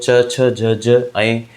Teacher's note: स्पर्श संघर्ष व्यंजन जो होते हैं वो च, छ, ज, ज